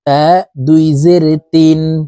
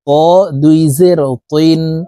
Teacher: তা হরফের উচ্চারণ পাতলা ভাবে পড়তে হবে আর ত হরফের উচ্চারণ মোটা করে পড়তে হবে